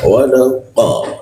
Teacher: Huruf qa di siku tenggorokan, lidahnya dinaikkan sehingga rongga udara terkunci dan tidak ada hembusan udaranya.